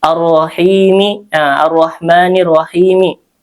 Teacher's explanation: Ini ra-nya dibaca tafkhim tebal, ma itu mad tabi'i 2 harakat. Ar-Rahimi ra-nya tebal, him mad arid lisukun.